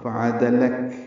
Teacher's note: کاف ساکن کر دیں گے وقفاً، اس میں ہمس ہوگا، فعدلک، ہلکی سی سانس کی آواز جاری رہے گی